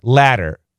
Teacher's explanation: the flap T actually sounds like a D, but not a regular D, a very, very fast D.